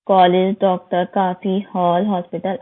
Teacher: जो अंग्रेजी से कुछ वर्ड आए हैं हिंदी में, तो वो उनमें ओ आ के बीच की ध्वनि आ की ध्वनि का प्रयोग होता है, तो उनके ऊपर हमें अर्ध चिन्हों का प्रयोग जरूर लगाना चाहिए।